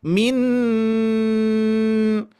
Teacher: ujung lidah nempel ke gusi gigi seri atas